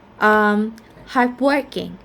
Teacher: So we stress on the word work, the second element.